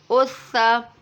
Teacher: सौद को पुर यानी मोटा पढ़ेंगे। हमज़ा सौ ज़बर अस, सौ ज़बर सौ, अस सौ।